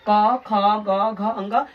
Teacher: क, ख, ग, घ, अंग, ये जो बोलेंगे आपसे कंठ से निकलेगा। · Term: कवर्ग